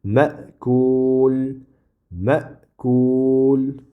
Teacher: keyin oxiridagi mim buni sukun qilamiz. Chunki bu yerda oyat tugadi. Oyat tuganda vaqf qilamiz.